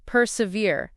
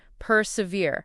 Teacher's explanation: For pronunciation, it's persevere, 3 syllables with the stress on the last syllable, veer. Persevere.